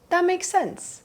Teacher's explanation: But in natural speech, we just completely drop the T, right? Especially when the next word starts immediately, that T does not get pronounced.